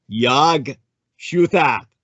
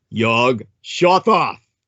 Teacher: the way the Arab man would speak it on the street, would be Yag Shuthat, with the slight change in the quality of the vowels, anglicizing or vulgarizing, as the Anglos would do, as Yog Shothoth